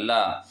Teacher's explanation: ल का उच्चारण स्थान होता है दंत होता है